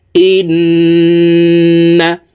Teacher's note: এ হামজা তাশদি নুনের সাথে নাকের বাঁশি থেকে তিন সেকেন্ড পরিমাণ গুন্নাহ করে ধরে রাখবো এই গুন্নাহকে ওয়াজিব গুন্নাহ বলা হয় গুন্নাহ যদি আমরা না করি · তাসদিদওয়ালা নুনের সাথে নাকের বাসি থেকে 3 সেকেন্ড পরিমাণ গুন্নাহ করে ধরে রাখবো।